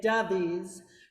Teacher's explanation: 'cause Brazilians would say dovies, right? They would make that extra syllable there